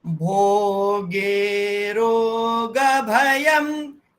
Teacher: भोगे रो तीनों दीर्घ हैं, ग और भ ह्रस्व है, यम दीर्घ है